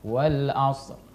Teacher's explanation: jadi ro-nya tetap dibaca, tapi tekanannya tidak terlalu keras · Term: ro sukun